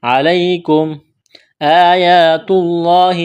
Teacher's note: لفظ اللہ کے نام سے پہلے پیش ہے، لفظ اللہ کے نام کو موٹا کرنا ہے